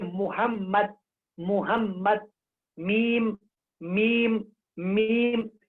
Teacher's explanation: मीम का मखरज दोनों होठों की खुशकी का हिस्सा